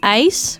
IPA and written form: ɛis (Ijs)